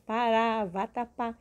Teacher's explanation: uma oxítona quando nós separamos a sílaba contando daqui para lá ela é a última sílaba então a última sílaba é a sílaba mais forte é a sílaba tônica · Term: oxítonas